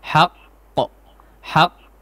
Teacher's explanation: si huruf qalqalah yang bertasydid ini ya. Al-haqq ya, ada ditahan sejenak.